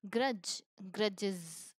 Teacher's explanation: here we have added is because it's ending on this J sound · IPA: /iz/